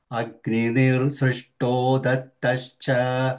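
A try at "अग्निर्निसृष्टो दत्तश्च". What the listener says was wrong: Nir is not there. Agnir nisrishto.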